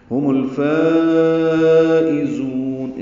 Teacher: ہم الفائزون، اسے مد واجب بھی کہتے ہیں، لمبا کریں گے ہم اس کو 4 حرکات سے زیادہ. زا کو تیز صفیر کی آواز سے ادا کریں گے اور لمبا کریں گے، نون ساکن پہ وقفاً اظہار ہے.